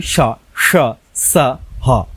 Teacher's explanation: একে যদি আমরা উচ্চারণ করি স, স, সা, হ, 3টার উচ্চারণ, 3টা স্বয়ের উচ্চারণ আলাদা আছে এবং সাথে হ আছে। কিন্তু এদের 4জনের একটা মিল আছে যে এদেরকে যখন উচ্চারণ করা হয় তখন মুখ দিয়ে কি হয়? উষ্ম শ্বাস বের হয়।